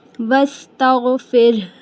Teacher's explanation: زیر ہے نا، اس لیے رو کو ہم باریک ہی ادا کریں گے، اور یہاں پہ جب ہم وقف کریں گے تو ہا کی آواز کو بھی کلیئر بتائیں گے کہ ہا کی آواز بھی آنی چاہیے۔ واستغفر، ہا یہ حلق کے آخر والا ہا ہے